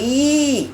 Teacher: ஓரம் மேல்வாய் பல்லை பொருந்தும் இப்ப பாருங்க ஈ அப்படின்னு சொன்னா வாயை திறக்கிறோம் ஈ அப்படின்னு சொல்லும்போது இந்த நாக்கின் அடி ஓரம் மேல்வாய் பல்லை பொருந்தும்